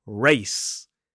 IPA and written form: reɪs (race)